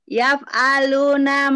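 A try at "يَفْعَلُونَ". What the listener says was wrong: Agak panjang Bu. Yaf'aluna panjang. Ya, ujungnya panjang.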